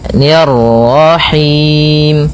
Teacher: ni tipis ketemu dengan ra yang tafkhim. Ra tebal maka kita baca dengan bacaan tebal ra nya